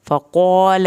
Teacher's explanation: क़ाफ़ को पुर करके पढ़ना है, लाम की ज़बर को आपने लंबा बिल्कुल नहीं करना।